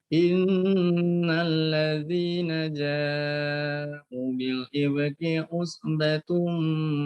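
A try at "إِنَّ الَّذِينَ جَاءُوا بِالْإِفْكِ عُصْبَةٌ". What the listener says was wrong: Diulang kembali, ja'u itu karena dhammah tentu di depannya waw, ya, pas matobi, ja'u dibaca panjang.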